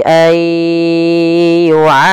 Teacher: masukkan kandungan hidung, karena di sini ada idgham bi gunnah